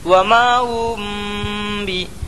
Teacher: میم ساکن کے بعد با آیا، اس لیے غنہ کے ساتھ اخفاء شفوی ہوگا